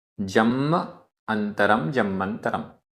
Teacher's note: जम्म आधा म पूरा म और छोटा आ अंतरम छोटा आ दो छोटे आ मिलकर बड़ा आ हुआ लेकिन अंतरम में आधा न और त ये संयुक्त अक्षर है और इस संयुक्त अक्षर के कारण जो इससे पूर्व दीर्घ स्वर है वो भी ह्रस्व हो गया